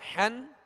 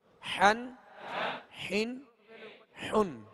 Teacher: ہا جو ہے وہ حلق کے نچلے حصے سے ادا ہوتی ہے، اور ہا جو ہے یہ وسط حلق یعنی درمیان حلق سے ادا ہوتے ہیں